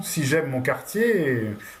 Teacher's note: Et là, vous voyez qu'en fait, avec les groupes, donc on va avoir une dernière syllabe plus longue. Il y a aussi l'accentuation en fait montante dans la question.